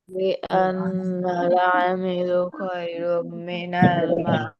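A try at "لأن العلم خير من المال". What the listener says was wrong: লিআন্নাল আমিলু না, লিআন্নাল ইলমা। লিআন্নাল ইলমা খায়রুম মিনাল মাল।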